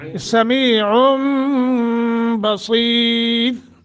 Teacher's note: साद मोटा, रा को बारीक पढ़ना है · समीउम, नून तनवीन के बाद अगला जो हर्फ है उस पहला लफ्ज़ उसका बा है, लिहाजा जब नून तनवीन के बाद बा आ जाए तो नून तनवीन को मीम से बदल कर पढ़ते हैं